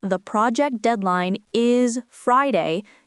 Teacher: For a definitive statement, such as, the project deadline is Friday, your voice must fall down at the end. This signals closure and certainty.